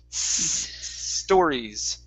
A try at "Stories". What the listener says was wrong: Okay, that's a better S. Now give me a good R instead of story. Stories. So tongue curved like this for the R.